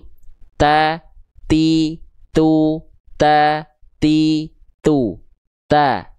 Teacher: ketika dia melafalkan huruf ta itu si ujung lidahnya melet, si ujung lidahnya keluar